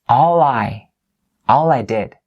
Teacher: I linked the l sound here at the end of the word all with the aɪ of the word I